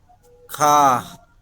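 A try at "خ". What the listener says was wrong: খা না কি হবে, খ আকার ছাড়া, খ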